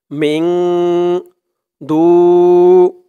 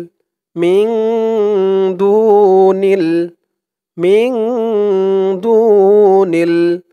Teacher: মিং বলে ইকফা গুন্না করতে হবে, কারণ নুন সাকিনের পরে ইকফার 15 হরফের এক হরফ দাল আসছে, তাই এখানে ইকফা অর্থাৎ নাকের ভিতরে লুকিয়ে গুন্না করে পড়তে হবে। মিং দু, দু এক আলিফ টান, পেশের পরে ওয়াও সাকিন।